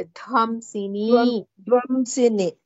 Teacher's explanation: ಧ್ವಂಸಿನಿ ಇಸ್ ಮಹಾಪ್ರಾಣ like ಧನ ಧರಣಿ